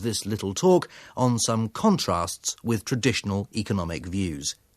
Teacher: speaker has reached the end of section two of his talk his intonation falls the pitch and music of his voice get lower and he gets quieter before he introduces the next section his intonation then rises again